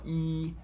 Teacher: For a vowel like e, I spread my lips. I'm not rounding it. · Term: unrounded vowel